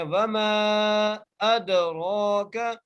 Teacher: میم کو ہم تین الف کی مقدار کھینچ کے پڑھ رہے ہیں